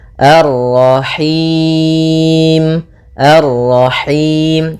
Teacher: dia lepas dari yang namanya masuk hidung dan juga lepas dari namanya imalah, yaitu harus kasrah sempurna